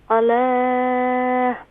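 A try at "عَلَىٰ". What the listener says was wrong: زیادہ نہ کھینچیں, صرف ایک الف کی مقدار.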